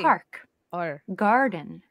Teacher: in an American English accent you would say Park Garden where the r sound has special emphasis in the back of the mouth